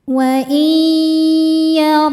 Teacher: Cara membacanya bunyi nun dileburkan atau dimasukkan ke ya disertai bunyi dengungan. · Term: idgham bi gunnah